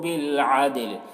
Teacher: دال میں قلقلہ کریں گے، دال حروف قلقلہ میں سے ہے